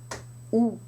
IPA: u